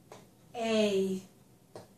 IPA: eɪ